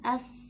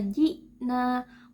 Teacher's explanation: suara kita akan mengalir karena dia tidak memiliki sifat syiddah